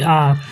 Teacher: विवृत स्वर वे स्वर होते हैं जिनके उच्चारण में मुख द्वार पूरा खुलता है